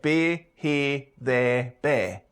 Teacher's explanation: The near and square diphthongs become monophthongs, so we get beer, here, there, bear.